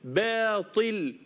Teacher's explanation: من حيث التفخيم والترقيق قبل منها باء مرققه تبقى با با الباء مرققه والالف مديه مرققه لكن الطاء مفخمه ما حدش يقول باطي لا باطي باطي باطي باطل ارقق الباء